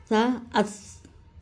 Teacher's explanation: تو اس کا یہ کہاں سے نکلتا ہے کہ زبان کی نوک، اوپر کے سامنے کے جو دانت ہیں ہمارے اوپر والے، تو اس کے نیچے زبان کی نوک ہمیں رکھنا ہے، تو دونوں جب اس کی ادائیگی ہوتی ہے تو زبان اور دانتوں کے بیچ میں سے ہوا پاس ہوتی ہے